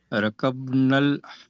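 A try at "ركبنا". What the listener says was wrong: So rakabnal or rakiba? Rakibnal, right? Rakiba yarkabu. So kaf should have a kasra. Rakibnal hafilata.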